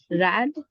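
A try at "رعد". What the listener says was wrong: Perfect. Rad.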